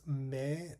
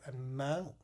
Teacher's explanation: And lastly, we have the mid-front unrounded nasal. This is taking the A and raising the velum and nasalizing it.